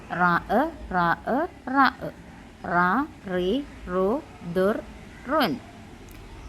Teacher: നാവിന്റെ പുച്ചത്തിന്റെ പുറവും മേൽമുൻപല്ലുകളുടെ ഊനുമാണ് റായിന്റെ ഉച്ചാരണസ്ഥാനം